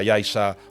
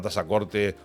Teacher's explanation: cuando pronuncias la palabra Yaiza o la palabra Tazacorte o el sustantivo Nausé o otros nombres canarios, pronúncialos con S